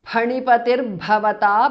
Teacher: Visarga changes to repha.